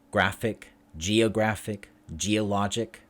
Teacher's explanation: So stress on the second from last. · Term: stress on the penultimate